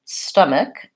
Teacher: Stomach is pronounced with the first vowel is an sound, and it has first syllable stress. So stum is long and ik is short. Stomach, so that's the sound, schwa.